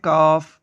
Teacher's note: کاف زبان کی جڑ اور تالو کے سخت حصے سے ادا ہوتا ہے